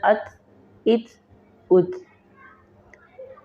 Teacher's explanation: ہلکی سی سانس کی ساؤنڈ اس میں نکل سکتی ہے لیکن قلقلہ نہیں ہوگا۔